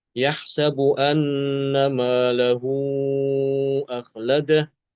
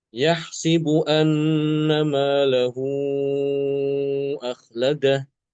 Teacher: Maka di sini Imam alqisai membaca dengan mengkasrahkan huruf sin yahsibu ya. · Imam Hafiz membaca yahsabu anna malahu akhladah. Imam Al-Kisai dengan mengkasrohkan sin.